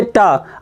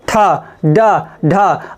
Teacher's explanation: आपकी जो जीभ है वो कहाँ, आपके मसूड़ों में टच कर रही है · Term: मूर्धन्य व्यंजन